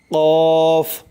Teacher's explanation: জিহ্বার গোড়া হইতে একটু আগে বাড়াইয়া তার বরাবর উপরে তালুর সঙ্গে লাগাইয়া উচ্চারিত হয় কাফ। কাফ, শক্ত করে কাফ।